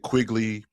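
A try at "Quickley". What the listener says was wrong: Quickly. It sounds like you're saying Quigley.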